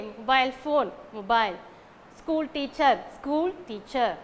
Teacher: we have to give stress on the first noun